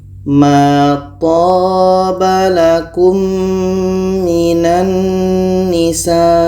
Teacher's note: Mim mati bertemu mim idgham syafawi. Kita dengungkan.